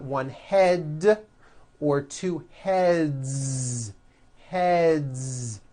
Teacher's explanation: now the word head ends with a voiced d